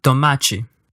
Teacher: t as in toachi articulated in that exact same spot and without any big puff of air like we use in English